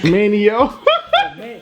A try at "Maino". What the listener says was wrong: Maino. Just think about it, M-A-N-O. Just act like the I ain't there. No I in Maino.